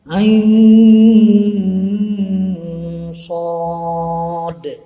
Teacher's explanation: Ain itu unsurnya ada alif, ada ya, dan nun. Kemudian ketemu dengan huruf shad, bunyinya harus istilahnya disamarkan, didengungkan. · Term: mad lazim harfi musbah